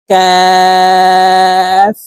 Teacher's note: কাফ হরফের উচ্চারণ জিহ্বার গোড়া থেকে একটু আগে বাড়িয়ে উচ্চারণ করব